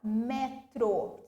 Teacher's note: a minha sílaba tônica não seria o tro, seria o me